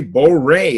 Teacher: you can say borei and have more of an American R, English R.